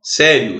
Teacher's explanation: Sério, você tem o I, que é semivogal, o O, que é a vogal. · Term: ditongo crescente